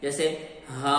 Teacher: شروع میں آپ کی آواز حلق کے آخری حصے سے آئے گی اور اس کے بعد منہ کے خالی حصے سے آواز آئے گی